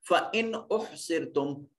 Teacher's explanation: سو نون ساکن کے بعد حمزہ ہا عین ہا غین خا جہاں موجود ہو وہاں نون کو ظاہر کر کے پڑھتے تھے اور اس کو اظہار کا قانون کہا جاتا تھا.